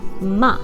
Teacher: the last tone is, of course, the sharp drop